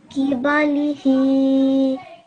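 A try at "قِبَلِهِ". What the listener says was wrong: This qaf over here, try and say a little bit more from your throat. Qibalihi.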